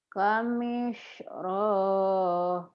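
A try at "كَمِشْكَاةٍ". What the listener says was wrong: Roh mana salah rohnya. Ada roh dari mana, Bu? Gak ada roh itu mah kap, Ibu. Kamiskah.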